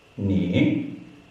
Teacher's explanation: Second tone, going upwards.